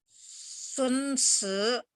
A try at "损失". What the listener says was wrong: Shi nggak ada satu ya, jadi sun. Sun shi nggak ada satu ya. Sun. Shi, sun shi.